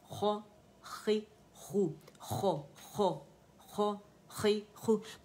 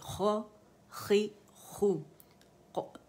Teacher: وائسلیس letter ہے، پیچھے سے ہوا آ رہی ہے، یوویلا سے جو گیپ تھوڑا ہوتا ہے اسے فل کرتے ہیں، جب اسے اوپر لے کے جاتے ہیں تو یہ گاگلز جو کرتے ہیں سکھانے کے لیے، تو یہ آواز غائن میں بھی آتی ہے اور اس میں بھی آتی ہے.